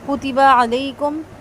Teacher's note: کاف تا با تینوں ہی لمبے نہیں ہوں گے